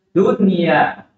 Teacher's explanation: Idhar mutlak. Di situ tidak berlaku idgham bi gunahnya, nun mati ketemu yaknya. Karena di situ idhar mutlak.